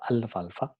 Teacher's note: Cuando viene seguida por una fricativa dental, por F, entonces alfalfa, vamos a notar al pronunciar la palabra alfalfa, entonces la L es alveolar, entonces no sufre cambios.